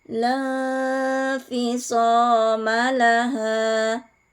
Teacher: karena ada nun sukun bertemu dengan salah satu huruf ikhfa Fa cara membacanya disamarkan disertai dengan dengung